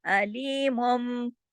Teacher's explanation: मुन जो है वो मुन नहीं रहेगा, बल्कि वो अलीमुम, मीम मीम पेश मुम ऐसे हो जाएगा। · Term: इक़लाब